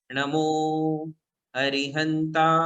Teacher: नमो अरिहंताणम, इसमें अरि ये ह्रस्व है, किंतु हंताणम ये दीर्घ है, तो ता को दीर्घ ही पढ़ना है। नमो, नमो में मो दीर्घ है, तो मो को दीर्घ ही पढ़ेंगे